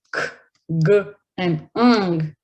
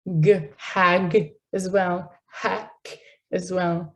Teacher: And usually, the part of the tongue that can reach to that back part is the back of the tongue. So velar sounds are produced by the back of my tongue and it pressing or interacting with the soft palate